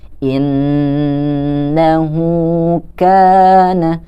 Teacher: Nah, di situ kita bertemu lagi nih dengan huruf nun yang bertasydid. Kita harus membacanya dengan ditahan.